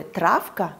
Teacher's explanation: в слове «травка» звонкое «в» звучит как «ф» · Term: оглушаться